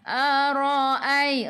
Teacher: Ra baca dengan tebal, ra baris atas.